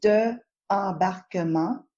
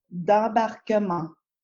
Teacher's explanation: The D apostrophe is actually the word de, a very common word that usually means of or from. But because de, appears in front of a word beginning with a vowel sound, like embarquement, it contracts to D apostrophe and its pronunciation mushes together with. embarquement, So instead of de embarquement, separately, we must say d'embarquement.